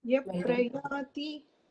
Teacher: ॐ इत्येकाक्षरं ब्रह्म व्याहरन् मामनुस्मरन् या प्रयाति त्यजन् देहं स याति परमां गतिम्. Yaha it has a visarga followed by pa, so it will become yaf prayati